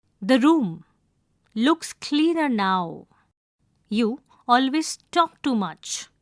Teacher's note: Use falling intonation towards end of the sentence as declarative sentences usually have falling intonation.